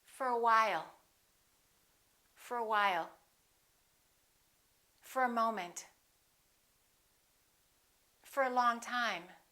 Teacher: We reduce the O and it becomes a. For. Repeat after me.